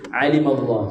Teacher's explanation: Atas dia itu 3 halqum tuan-tuan So ain dia tengah-tengah. Dipanggil dalam Arab wasatul halq, pertengahan halqum. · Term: huruf ain